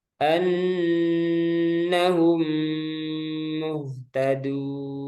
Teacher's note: Jadi sini mim pertama sukun, mim kedua berharokat. Mim pertama dimasukkan langsung ke mim kedua, kemudian ditambah gun. · mim pertama diidghamkan atau dimasukkan ke dalam mim kedua. Nah, dengan tempo guna yang dipanjangkan. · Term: idgham mimi